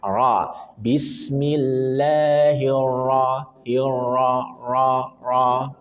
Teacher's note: ra bertasydid berharakat fathah maka wajib dibaca tafkhim tebal